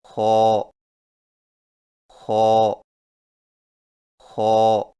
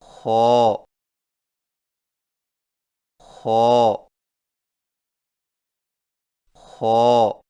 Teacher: خو کی ادائیگی میں زبان کی جڑ کو تالو کی طرف بلند کرتے ہوئے موٹی آواز میں پڑھیں، یعنی خو خو خو۔